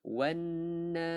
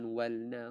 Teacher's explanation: Sebabkan alif lam di sini adalah alif lam syamsiah. Alif lam syamsiah kita tidak lafazkan sebutan lam dia tu. kita terus masukkan wanna, bukan walna, wanna.